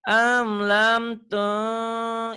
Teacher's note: Amlam tung ikhfa ditahan satu alif